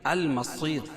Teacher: المصیر، صاد کو پر پڑھیں گے، اور رائے ساکینہ سے پہلے یا ساکن ہو تو رائے ساکینہ کو ہر حال میں باریک پڑھیں گے